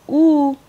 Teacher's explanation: in a vowel like U which is also a high vowel the narrowness is in the back cavity of the mouth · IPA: [u]